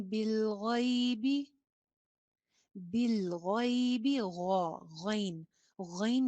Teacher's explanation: غین بھی موٹا حرف ہے، خا اور غین دونوں ایک ہی جگہ سے نکلتے ہیں، دونوں حروف حلقی بھی ہیں.